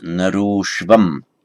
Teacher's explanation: Narah, the man, ashwam, that's just an ashwam, gacchati, the man goes to the horse. Now, where you get an ah followed by a short ah, they coalesce into an o